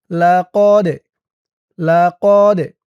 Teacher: এই দালটা কলকলার হরফ, ধাক্কা দিয়ে পড়তে হবে।